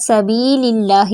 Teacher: پہ، فی یا مد، سبیل اللہ یہاں پہ یا مد ہے، اللہ کا نام باریک پڑھا جائے گا